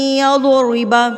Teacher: را جو ہے زیر کے ساتھ باریک پڑھی جاتی ہے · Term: را باریک